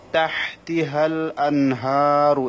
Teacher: এখানে নুন সাকিনের পরে হা এসেছে, সেজন্য এখানে গুণা হবে না এবং হাটাকে এক আলিফ টানতে হবে খাড়া জবরের কারণে।